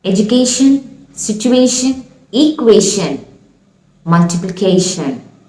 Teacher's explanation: So the tion suffix makes the sh sound. The mechanism of producing this sound is called post-palato alveolar.